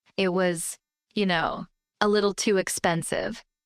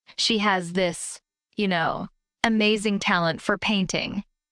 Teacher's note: The intonation is flat. It doesn't go up. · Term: flat intonation